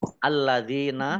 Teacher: Alladzina, lamnya dibaca double, ada tasdidnya. Dzal kasroh ya sukun, mat tobi'i, panjang 2 harokat